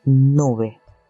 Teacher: Nun es una alveolar nasal sonoro y en este caso suena como en la palabra nube.